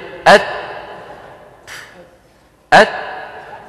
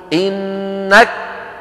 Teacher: الشدة أولا فالهمس عند نطقنا لكل كاف أو تاء، ويكون هذا أوضح ما يكون في الكاف والتاء الساكنتين، في الكاف والتاء الساكنتين.